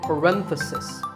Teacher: if you talk about just one bracket you say parenthesis the stress is on rent